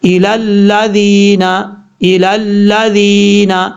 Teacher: لال کے بعد جو یا ہے یہ یا مدہ ہے، ایک الف کی مقدار اس کو لمبا کر کے پڑھا جائے گا